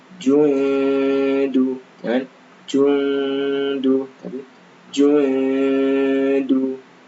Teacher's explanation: Kemudian jundu, nah ini dibaca ikhfa ya, nun sukun bertemu dal. Jundu, karena dal maka ditipiskan.